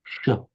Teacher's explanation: the sh is more of a palatal sound